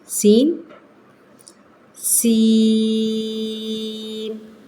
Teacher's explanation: زبان جو ہے بڑی نرمی کے ساتھ اس کو ادا کر لیتی ہے، تو سیٹی کی آواز کے ساتھ سین